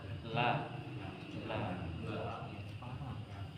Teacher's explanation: aljahri ya itu tidak mendorong udara keluar dari g la la bukan sehingga keliru ketika membaca huruf lam